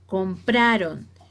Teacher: Compraron es una palabra grave o llana porque su entonación de la sílaba tónica es la penúltima